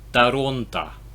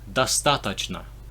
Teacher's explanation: So the other ones, it should be just all O's, but it's actually Toronto. So the O is pronounced as an A, just to be annoying.